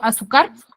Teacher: No termina ni en N, ni en S, ni en vocal y tiene la mayor fuerza de voz en la penúltima sílaba. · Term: grave, Grave